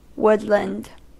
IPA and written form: ˈwʊdlənd (Woodland)